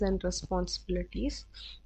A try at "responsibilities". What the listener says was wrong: Yeah, and then again on the responsible bill on that syllable, I'm hearing again a lot of that that rhotic bill Responsibilities instead of responsibilities.